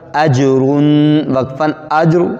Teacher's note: را بھی موٹا بھی ہو گیا ہے اور جیم پر قلقلہ